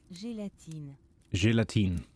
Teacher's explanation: Alright, so they don't pronounce the E at the end.